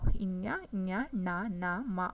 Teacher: ಅನುನಾಸಿಕ ಅಂದರೆ ಮೂಗಿನ ಸಹಾಯದಿಂದ ಉಚ್ಚಾರಣೆ ಮಾಡ್ತಕ್ಕಂಥ ಅಕ್ಷರಗಳು. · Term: ಅನುನಾಸಿಕ ಅಕ್ಷರಗಳು